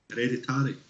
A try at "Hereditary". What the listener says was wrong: Yeah, it's got a T in there.